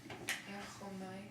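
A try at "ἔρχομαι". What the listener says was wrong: Yep, just make that omicron a short O sound.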